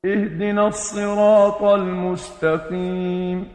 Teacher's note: ہا کو نا حلق کے نیچے سے ادا کیا